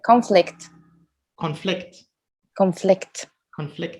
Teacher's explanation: you see how the stress is always at the end because it's a verb